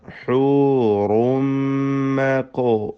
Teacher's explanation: ഹൂറുൻ എന്നതിലെ തൻവീൻ അത് പൂർണ്ണമായും മീമിലേക്ക് ലയിപ്പിച്ച് മണിക്കണം. ശബ്ദ നൽകപ്പെട്ട മീമിനെ ഉച്ചരിക്കണം.